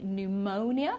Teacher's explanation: We don't pronounce the P in psychology, psychiatrist, pseudo, okay, so we don't pronounce the P at all.